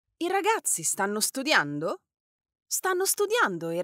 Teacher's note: the intonation of your voice Rises towards the end of the sentence